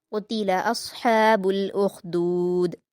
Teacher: क़ुतिला में क़ाफ को पूर पढ़ना है, अस्हाबु में साद और उख़दूद में ख़ा को पूर पढ़ेंगे और दाल पर कलकला करेंगे